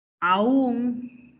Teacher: Es una palabra aguda, ¿no es así? La A se separa de la U, porque el acento recae ¿dónde? El acento recae en la última sílaba.